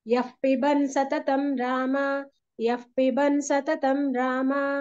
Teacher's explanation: ఎక్కడ విసర్గ తర్వాత పా వచ్చినా కూడా ఫ కారంలాగా పలికి ఆ తర్వాత పకారం వస్తుంది